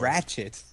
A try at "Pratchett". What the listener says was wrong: Pratchett with a P. Pratchett.